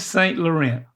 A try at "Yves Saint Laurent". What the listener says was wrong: And then there's no T sound. And it's more of instead of an E-N, it's an A-N for the pronunciation of the last word. O-N. Go with O-N instead of E.